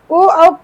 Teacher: ओ औ का उच्चारण कंठ और ओष्ठ से होगा। कंठ और ओ ओष्ठ से होगा। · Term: कंठोष्ठ